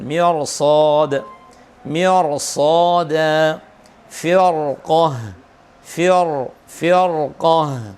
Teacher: mirsad, ra-nya harus dibaca tebal. Mirsad, mirsad, firqah, firqah, karena ketemu huruf isti'la.